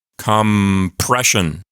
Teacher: the m and the P just flow together because your lips are already together and your mouth doesn't have to make that awkward movement and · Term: assimilation